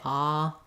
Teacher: the ah in English the back of my tongue is down